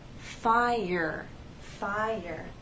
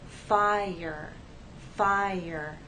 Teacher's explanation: there is the Y sound that connects the two vowels